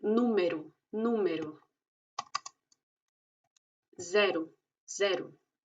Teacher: La O está al final y se dice U · La letra O tiene la misma particularidad que la letra E y es que suena como una U en el caso de que no sea la sílaba tónica, la sílaba fuerte.